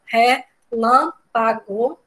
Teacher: O lã é o mais forte, é uma proparoxítona mesmo